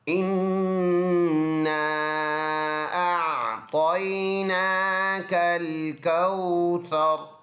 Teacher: ناک میں آواز کو 1-2 سیکنڈ کے لیے ناک میں آواز لے کے جائیں گے، اس کو پختہ غنہ، پکا غنہ کہتے ہیں۔